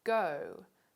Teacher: a voiced velar stop is found at the beginning of the word go